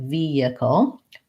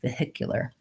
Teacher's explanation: in vehicle we don't say the H sound it sounds more like vehicle but in vehicular we do say the H sound · we have second syllable stress and so we use that H to start the syllable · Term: silent H